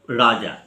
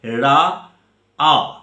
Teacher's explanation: সেই উচ্চারণটা এসে দাঁড়াচ্ছে রা আ, অর্থাৎ এখানে জয়ের লোপ পেয়েছে। এখানে তো জ নেই, এখানে কোনো জয়ের পার্ট নেই, অর্থাৎ জ হচ্ছে ব্যঞ্জনধ্বনি।